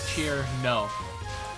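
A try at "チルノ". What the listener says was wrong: But it's Chirino. 3 syllables.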